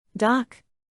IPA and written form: dɑk (Dock)